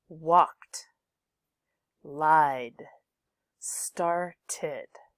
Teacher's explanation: with walked it ends it with a tea with lied it ends in a D and with started you've got an extra syllable there